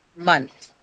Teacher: So month is the syllable that takes the stress